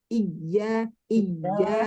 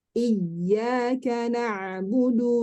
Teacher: kesalahan yang sering terjadi itu adalah ketika nabar dia menjadi syiddah